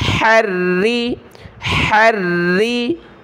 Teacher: را کو موٹا نہیں کرنا، پتلا کر رہے ہیں، ہا کو گلے سے نکالیں